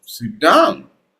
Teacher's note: use your falling tone for a statements for wh question for command certainty and finality like a statements.